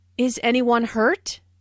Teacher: This is a yes/no question, so the intonation rises at the end.